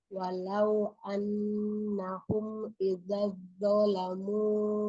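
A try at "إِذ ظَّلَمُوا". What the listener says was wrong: Bukan iza. Iz. Zalnya sukun masuk ke Iz. Zalamu.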